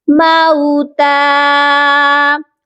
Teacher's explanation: میم کے ساتھ جو واو ہے وہ واو لین ہے، اس کو ہم نرمی سے پڑھیں گے